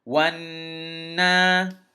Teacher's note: when the noon has a shadda on it, you're supposed to nasalize it. You're supposed to hold it in your nose a little bit